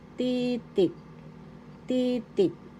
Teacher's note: Second syllable t the accent is in the first syllable